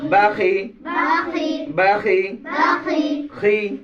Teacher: খর থেকে উচ্চারণ হবে, গলা থেকে